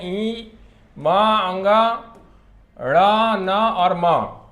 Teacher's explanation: क्योंकि इनका उच्चारण नासिका के साथ हो रहा है, इसलिए इनको अनुनासिक वर्ण भी कहा जाता है। तो अनुनासिक में जितने भी वर्ग हैं उनके अंतिम वर्ण जो है ये नासिका से उच्चारित होते हैं, इसलिए जो है इनको अनुनासिक वर्ण भी कहते हैं।